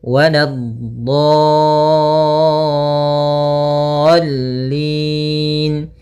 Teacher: Untuk mad lazim musaqqal kalimi atau kalimi musaqqal panjangnya 6 harakat, maka panjangkan dhatnya dulu 6 harakat, kemudian sempurnakan di dha-nya, kemudian baru masuk ke huruf lam. Nah, tadi juga pada huruf sebelumnya dhatnya harus ada istitalah sedikit. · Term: mad lazim kalimi musaqqal